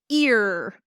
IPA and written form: ɪr (ear)